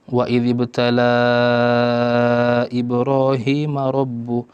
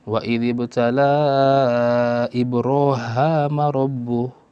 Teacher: salah satu ciri khasnya membaca kalimat Ibrahim dengan Ibroham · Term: riwayatu Hisham an Ibni Amir